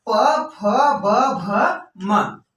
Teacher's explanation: प बोले लेकिन दोनों होठों को एक दूसरे से बिना सटाए हुए, प बिना सटे भैया प निकलना मुमकिन नहीं है। फ बिना सटे भैया निकलना, मतलब फ निकलना मुमकिन नहीं है।